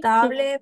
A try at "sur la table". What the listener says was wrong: Ah, sur la table. Pas tablé. Table. Table. Et la L va terminar. No es tablé, sino sur la table.